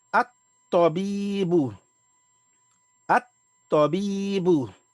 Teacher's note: And the law of son letters again is that the aleph, or the previous word, the last letter of the previous word, the vowel, will be joined onto the ta, which is the first letter of the word, and not onto the lam